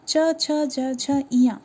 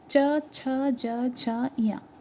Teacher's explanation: आपका जो टंग है वो दांत के जस्ट थोड़े से ऊपर में टच हो रहा है, वो स्थान आपका तालु है।